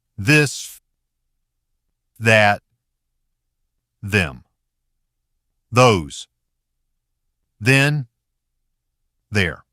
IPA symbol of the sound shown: ð